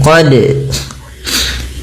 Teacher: huruf dal harus dipantulkan karena huruf dal memiliki salah satu sifat yang dinamakan dengan qalqalah, yaitu memantul ya, atau ittirab, getaran.